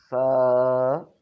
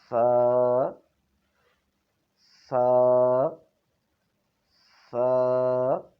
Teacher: اپنی زبان کی نوک کو اوپر والے دو دانتوں کے نیچے والے کنارے پر لگانا ہے، لیکن وہاں پر لگا کر چھوڑنا نہیں ہے بلکہ فوراً ہی ہٹا دینا ہے۔